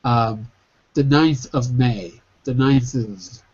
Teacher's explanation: the ofs are going to be uvs